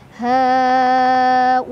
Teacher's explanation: Dibaca panjang boleh 4 boleh 5 harokat. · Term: mad wajib muttasil